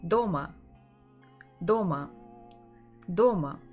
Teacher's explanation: the first one is very strong kind of hard Doma and the second is secondary not that strong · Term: stressed syllable